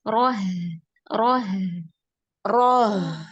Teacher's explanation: jadi caranya dari ro pangkal lidah naik, pas masuk di hak langsung diturunkan.